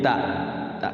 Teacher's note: sukunnya itu dibunyikan bunyi ta tak sukun biasa et bunyi et tidak boleh dia ee mantul tapi dia bunyi hams